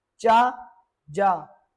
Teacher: चा एवं जा जब आप करेंगे तब आपकी जीभ आपके तालू से स्पर्श हो रही है